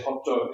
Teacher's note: in Japanese, after a hard sound, like a t or a d, they put an extra vowel. So they say hoto instead of hot.